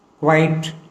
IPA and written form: kwaɪt (Quite)